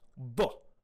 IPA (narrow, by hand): dˤ